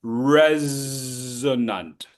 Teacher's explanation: the S in resonant sounds like a Z. It's voiced.